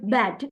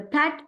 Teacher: the word bat voiced because vocal cords vibrate, but per the pat is voiceless. The word pat, this sound is voiceless.